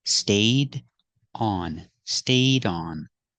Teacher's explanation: We see the D is before a vowel. So link the sounds.